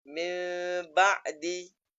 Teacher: Jadi bila nun ke atas huruf ba, nun yang nak didengungkan ke atas huruf ba, seolah-olah daripada nun yang mulut muncung sebelum menyebut huruf ba yang mesti tertutup mulut. Maka di situ ada kesamaran antara keduanya seperti min ba'di. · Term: iqlab